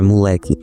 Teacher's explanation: Em vez disso, usamos mais a palavra moleque, na qual também temos essa redução vocálica da troca dos sons de ó por u